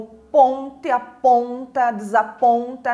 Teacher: algumas vogais que ficaram um pouquinho mais marcadas né mais fortes da minha leitura e foram justamente os fonemas nasais né representados ali pelo Dom e também pelou um né então